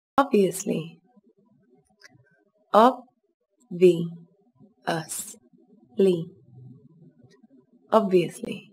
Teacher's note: Các bạn chú ý, từ này có 4 âm tiết, trọng âm rơi vào âm tiết đầu tiên. Từ này bắt đầu bằng âm o ngắn.